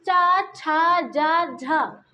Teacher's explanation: करना पड़ता है बोलने में इसलिए क्या है संघर्षी स्पर्शी क्योंकि स्पर्श भी हो रहे हैं और संघर्ष भी करना पड़ रहा है